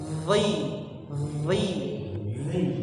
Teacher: Lidahnya dikeluarkan sedikit, kemudian ditebalkan.